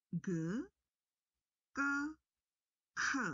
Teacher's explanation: G adalah bunyi dengan tekanan biasa atau lembut. Yang kedua, K adalah bunyi yang kuat atau keras. Dan yang terakhir tadi, K adalah bunyi hentak aspiratif.